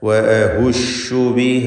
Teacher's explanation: ഷീനിന് മാത്രമുള്ള ഒരു സിഫത്താണ് തഫഷി എന്നത്. വ്യാപനം.